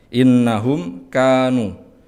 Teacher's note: ada mim sukun yang bertemu dengan kaf, maka ini termasuk idhar. Maka karena ini hukum idhar, maka harus dibaca jelas.